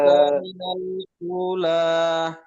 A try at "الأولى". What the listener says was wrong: উটা টান হবে, উলা।